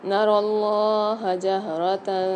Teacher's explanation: نر اللہ جہرۃ، رو کو موٹا پڑھیں گے اور لام کے اوپر کھڑا زبر آ رہا ہے، اس کو کھینچ کے پڑھیں گے۔